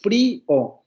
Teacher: cuando acentuamos esta primera vocal cerrada se deshace el diptongo